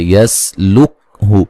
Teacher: سین کو ہلانا نہیں ہے، سین کو باریک سیٹی سے ادا کرنا ہے